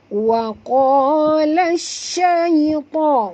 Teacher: Wa qa tebal, jangan tipiskan, kena qaf termasuk huruf isti'la.